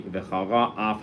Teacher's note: You need to put a little break between v'chara and af.